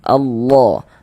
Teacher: Nah, lafaz Allahnya itu kita tebalkan huruf lam jalalahnya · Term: tabkhim